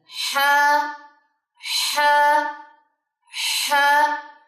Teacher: اس کو ایک تو ہے نہیں پڑھنا، اور اس کو کبھی بھی ہے نہیں پڑھنا، گلے کے بالکل وسط سے، حلق کے بالکل وسط سے، درمیان سے یہ نکلے گا